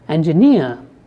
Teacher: if you take a word like engineer then the third syllable is stressed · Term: word stress